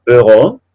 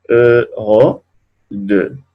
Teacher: esa va a sonar como una O, pero una O un poco cerrada